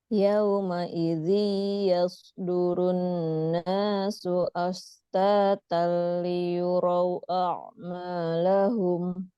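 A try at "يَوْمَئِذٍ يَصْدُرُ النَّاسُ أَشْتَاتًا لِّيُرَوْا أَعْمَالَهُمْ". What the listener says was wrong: Oke, tadi kurang sedikit lagi tahanannya di idgham bigunahnya.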